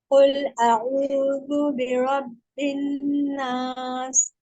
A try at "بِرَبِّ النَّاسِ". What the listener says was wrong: بیرب را موٹا رکھیں، بی اور موٹا کیونکہ آپ کا تھوڑا سا ہلکا سا موٹا ہوا ہے. را موٹا جہاں پہ ہے. بیرب الناس